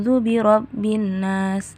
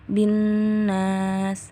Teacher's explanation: ya ayat pertamanya ini sampai sini Ule ruby robbinnas Nah jadi pas mengatakan binnas ditahan terlebih dahulu jangan langsung ke Ungu zubirobinas Nah kalau bisa ditahan binas oke